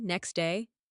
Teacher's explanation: next day the t sound is dropped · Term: elision